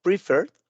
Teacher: de la R brincamos a la D, no pronunciamos la E